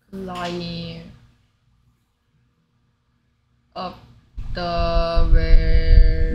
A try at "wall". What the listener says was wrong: 웰이 아니고 wall.